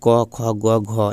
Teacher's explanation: क ख ग घ यह सब कंठ से बोला जाता है